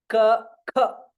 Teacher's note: ka is a Mahaprana, where you have to put little more stress or take little more breath for pronouncing.